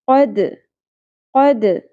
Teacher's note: قوف کو پر رکھیں گے، دال ساکن پہ قلقلہ ہوگا. قد، دال کو پر نہیں کرنا